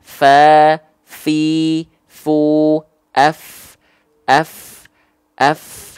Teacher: ya soalnya lagi kurang enak badan Nah jadi dilafalkan seperti ini ujung gigi seri atas kita kita sentuh kan dengan bibir bawah bagian dalam yang basahnya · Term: huruf Fa